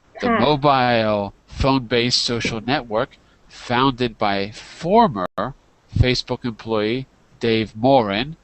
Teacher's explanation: my voice goes up and down to separate ideas